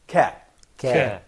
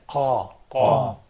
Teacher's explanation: Well, of course, when it comes to pronunciation, I would say that is qaf probably is pronounced by the final part of the soft palate